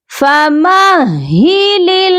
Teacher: ہا جو ہے سینے سے نکلتا ہے اور اس کو ہم نے دو بار نکالنا ہے. ایک بار تو اس کی ادائیگی مشکل ہوتی ہے، آپ نے دو بار اس کی ادائیگی کرنی ہے، تو اس کی پریکٹس آپ کو تھوڑی زیادہ کرنی پڑے گی.